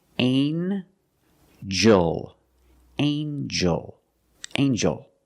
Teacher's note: In this word, the G makes a j sound, like jump and juice. Together with the N, a regular N sound, not the nasal but the regular N.